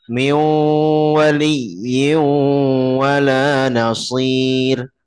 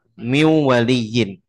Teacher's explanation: Kan min ketemu wa, min waliyyin. Nunnya masih ada gunnah yang harus disempurnakan.